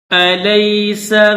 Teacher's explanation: سین ہے اس میں سیٹی کی آواز پیدا ہوگی